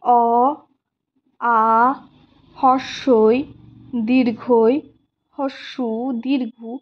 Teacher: বা যে স্বরধ্বনিগুলিকে আমরা কি বলবো, এই যেমন ধরো অ, আ, হস্যই, দীর্ঘ, এগুলোর সময় দেখো উচ্চারণ করো মৌখিক স্বরধ্বনি অ, আ, হস্যই, দীর্ঘই, হস্যু, দীর্ঘ, মুখ দিয়ে যখন আমি উচ্চারণ করছি তখন বাতাসটা সম্পূর্ণভাবে মুখ দিয়েই বেরোচ্ছে, কোনো রকম নাকের সাহায্য নিচ্ছে না বা নাক দিয়ে কোনো বাতাস বেরোচ্ছে না। এটাকে আমরা বলি মৌখিক স্বরধ্বনি।